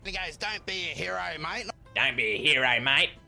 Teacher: he takes his broad accent to another degree, making it even more nasal when he's impersonating